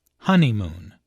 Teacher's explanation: There are 3 syllables in honeymoon, with a stress on the first syllable, honeymoon.